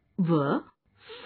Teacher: इन वर्णों का उच्चारण ऊपर के दांत और नीचे के होंठ से होता है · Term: दंतोष्ठ्य